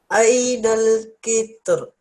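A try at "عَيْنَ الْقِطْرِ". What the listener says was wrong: First one is with the ra and the kasra. Ainal qitri.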